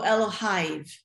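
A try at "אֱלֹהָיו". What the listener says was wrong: No, the yud doesn't have any sound. Just Elohav.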